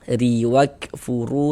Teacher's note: Kemudian di sini ada huruf ra memiliki baris kasrah ya, baris di bawah, maka ini huruf ra kita baca tipis, kita baca tarkik.